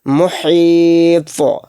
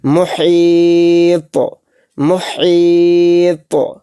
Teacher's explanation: یا پر اور طوا پر، یا تو حروف قلقلہ میں سے نہیں ہے تو اس لیے اس میں قلقلہ نہیں ہوگا۔ طوا کے اوپر جزم آ رہا ہے تو اس میں قلقلہ کا قاعدہ ہوگا